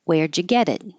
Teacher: And the T next to the E and the I make a D.